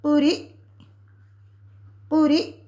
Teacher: ساکن حمزہ کو ہم جھٹکے کے ساتھ پڑھیں گے